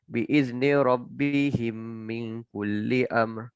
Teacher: Kita baca dia bagi lama sikit dia punya gunah tu, 2 harakat.